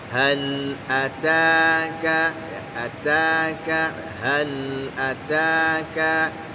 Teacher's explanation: huruf lamnya punya sifat diantaranya lah tawassut. Alirkan sedikit bunyi lamnya, sedikit saja ya.